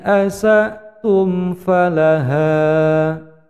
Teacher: Ini sinnya dipendekkan asa'tum